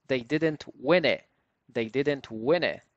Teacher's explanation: again we have t that is missing